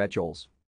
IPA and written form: ˈɛkʊz (Echols)